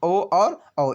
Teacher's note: कंठ ओष्ठ से आप ओ और औ बोलेंगे